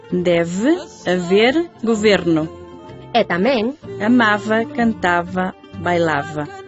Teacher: Fronte aos ves etimolóxicos que do latín conserva o galego en debe, haber, goberno, e tamén en amaba, cantaba, bailaba, o portugués tende de antigo a facer labio dental e se ve que vai entre vogais, e por iso escribe con V e pronuncia deve, haver, governo.